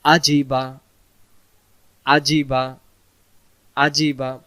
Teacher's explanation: জিম অক্ষর জিহ্বার মাঝখান থেকে শক্ত করে পড়তে হয়